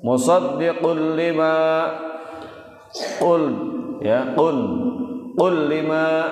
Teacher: tanwin ketemu dengan lam, hukum bacaan idgham bila gunnah